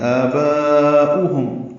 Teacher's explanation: با میں مد متصل ہے، الف مدہ کے بعد حمزہ اسی کلمے میں آنے کی وجہ سے حمزہ واو کی شکل میں ہے. تو آباؤہم یہ او پڑھیں گے، واو نہیں پڑھیں گے